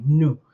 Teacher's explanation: The N in Yoruba is a little more nasally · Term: nasal consonant sound